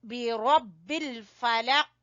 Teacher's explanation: रा को पुर पड़ेंगे और काफ के ऊपर कलकला करेंगे